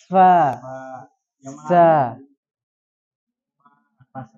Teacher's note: Kalau hamas dia mengalir dan tiada getaran di pita suara.